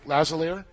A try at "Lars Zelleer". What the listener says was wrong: There's an R in there, though.